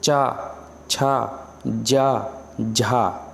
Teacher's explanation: कहीं ना कहीं ये जीवा जो है, जीवा का अंदर वाला सिरा जो मिडिल सिरा होता है, जीवा के 3 भाग होते हैं ना, तो जीवा का जो मिडिल सिरा होता है वो कंठ के आगे ऊपरी भाग में तालु में आके टकराता है